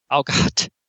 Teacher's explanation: That's a pre-aspirated T, I think, isn't it?